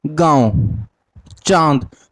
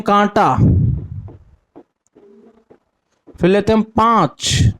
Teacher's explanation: अनुनासिक में होता था नाक से कम और मुख से अधिक